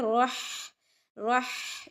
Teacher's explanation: ملہ الرحمن، ہی جو ہے یہ آواز بلند ہوتی ہے، دوسرے ہا کی ہے. رح، رح، یہ آواز حلق کے درمیان سے نکلتی ہے، اس میں سانس کی آواز آتی ہے